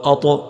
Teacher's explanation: طا حروف قلقلہ میں ہے تو اس کو قلقلہ کریں گے، اس کی آواز کو ہلائیں گے